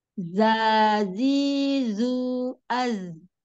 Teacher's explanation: makhrajnya dari ujung lidah ya hampir ee ketemu gigi seri bawah jadi dia di permukaan di belakang gigi seri bawah sama kayak makhraj huruf Shad huruf Sin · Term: huruf Zai